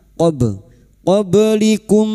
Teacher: qob sukun yang mati asli di tengah kalimat qalqalah sugro jangan lupa dipantulkan